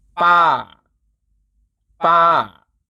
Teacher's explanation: The falling tone drops slightly at the end.